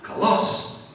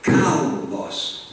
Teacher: now you notice the accent is on the first syllable not on the second